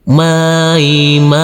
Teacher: Huruf mim yang berfathah A ini bertemu dengan huruf ya sukun kita lembutkan karena ini adalah bacaan lain.